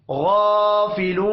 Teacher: غین کو موٹا پڑھیں گے، غین کے اوپر کھڑی زبر ہے، 1 الف کے برابر کھینچ کر بھی پڑھنا ہے